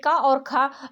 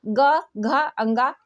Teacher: क और ख अघोष वर्ण है। ग, घ, ङ ये सघोष वर्ण है।